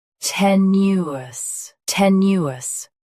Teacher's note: Both US and UK have the same pronunciation of this word. Stress te. Keep new smooth, then soften us.